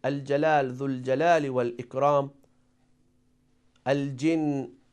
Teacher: So we pronounce letter Lam, but there isn't any Shadda. So letter Jim is one of the letter of Qamari.